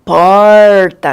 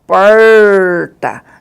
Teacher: ele é retroflexo por quê? Porque ele volta, vai lá para trás, né? E aí tem esse movimento e aí a língua da gente parece que vai entortar, né? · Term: R caipira